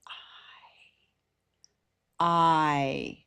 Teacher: It starts very low A and it moves up very high E where the smile is almost closed. E your teeth are almost together. · It starts very low, and it moves up very high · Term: big mover